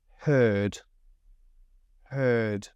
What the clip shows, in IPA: hɜːd